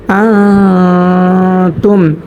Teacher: হামজা নুন জবর আ, তামিম পেশ তুম, আ তুম। এখানে নুন সাকিনের বামে তা আসার কারণে, তা হচ্ছে ইকফার হরফ, তা আসার কারণে নাকের ভিতর লুকায়া গুন্না সহিত পড়ব।